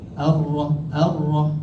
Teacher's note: huruf ra dia ada sifat takrir dia ada getaran